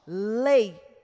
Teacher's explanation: nós temos o é mais forte, lei, e o I é o mais fraco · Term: Ditongo decrescente